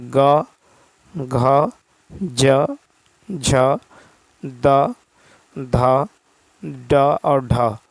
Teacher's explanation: ध्वनि की दृष्टि से जिन व्यंजनों के उच्चारण में स्वर तंत्रिकाएं झंकृत होती हैं उन्हें घोष ध्वनि कहते हैं